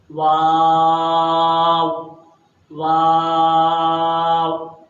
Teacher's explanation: جب اس کی ہم ادائیگی کریں گے تو آخر میں ہمارے دونوں ہونٹ گول ہو جائیں گے